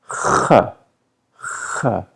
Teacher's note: Kh is a voiceless version of r.